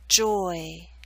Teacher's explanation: your lips should be more spread at the end of the word Joy again you're moving more towards e at the end so you're